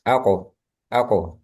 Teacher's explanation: ketika sukun itu mantul. Mantulnya langsung aja. Nggak perlu ditahan dulu terus dilepas.